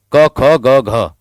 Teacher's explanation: जीभ का जो पिछला हिस्सा है हमारे कंठ को छूता है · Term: कंठीय